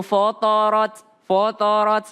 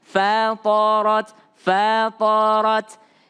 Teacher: Fa tipis, po tebal, ro tebal. Maka fa-nya jangan ikut menjadi tebal.